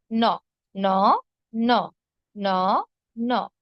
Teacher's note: উচ্চারণ কোন উচ্চারণের কোন ভিন্নতা নেই যখন আপনি শব্দে ব্যবহার করবেন মূর্ধন্য ন এবং দন্ত নকে আপনি একইভাবে ব্যবহার করবেন হ্যাঁ উচ্চারণ একই করবেন